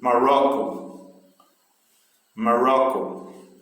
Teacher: uma situação em que a sílaba tônica está no meio da palavra